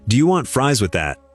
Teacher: Want, fries, that, 3 beats in 1 second. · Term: the beats